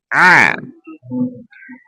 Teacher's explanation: Ain tenggorokan bagian tengah